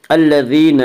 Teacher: وفرعون ذی الاوتاد الذین طغوا فی البلاد، الذین یا مدہ، یا مدہ وہ یا جو ساکن اس سے پہلے زیر ہو، یا مدہ کو ایک الف کے برابر کھینچ کر پڑھیں گے